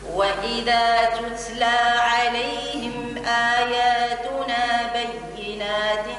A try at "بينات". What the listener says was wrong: كسرة التاء، بينات تاء، بينات تاء.